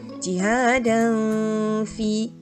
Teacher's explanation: Okey, apabila kita tengok tak ada nun sakinah tapi ada tanwin selepasnya huruf fa. Okey, jadi kita kena baca dengan dengung